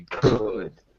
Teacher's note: When you say could, C-O-U-L-D, your vocal cords are not moving when you say could.